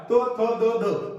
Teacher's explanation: त थ द ध म्हणत असताना आपली जीभ दाताला लागते. जीभ कुठे लागते दाताला म्हणून त्याला म्हणतात दंत्य व्यंजन.